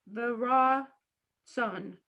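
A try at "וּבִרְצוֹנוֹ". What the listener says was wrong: No, it's just ooh.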